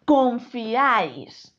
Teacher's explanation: Confiáis. Aquí hay un triptongo que está formado por una I cerrada, una A abierta y una I cerrada